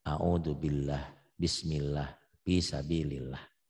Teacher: Tuh, bisa domah, bisa patah. Sebaliknya lafaz Allah dibaca tipis kalau sebelum lafaz Allah berbaris di bawah